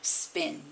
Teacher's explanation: you swallow the puff of air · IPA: [spIn]